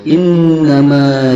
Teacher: ini ada dua yang pertama Nun Bertasbih yang kedua mim bertasydid cara membunyikannya yaitu dengan mendengungkannya dua harkat pada hidung